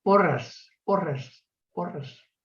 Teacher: ella no pronuncia exactamente una S sorda, pronuncia una S sonora. Es algo así como porras, porras, porras.